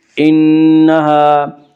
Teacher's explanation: نون مشدد غنہ ہوگا، غنہ کی مقدار ایک الف ہے۔ انہا، الف مدہ، الف ہمیشہ مدہ ہوتا ہے، الف سے پہلے ہمیشہ زبر ہوتا ہے، الف مدہ کو ایک الف کے برابر کھینچ کر پڑھیں گے۔